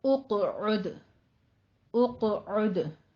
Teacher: यहाँ पे दोनों हुरूफ चूंकि कलकला वाले आ रहे हैं, दाल पे भी कलकला करना है, कौफ पे भी करना है।